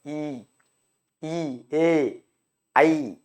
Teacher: வாய் திறக்கும் முயற்சியுடன் நாக்கின் அடி ஓரமானது மேல் வாய் பல்லை பொருந்தும் இந்த மேல்வாய் அப்படிங்கிறதை வச்சுக்கணும் வாயை திறக்கிற முயற்சியுடன் நாக்கின் அடி ஓரமானது நாக்கோட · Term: உயிரெழுத்துக்கள்